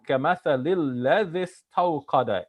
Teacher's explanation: استوقد has lost its I vowel here, but we're borrowing the I vowel from the previous word, الذي, and instead of making it long, الذي, we're saying الذي استوقد. · So مثلهم كمثل الذي. So the الذي doesn't start with a vowel, but we are borrowing the vowel from the previous one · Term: borrowing vowels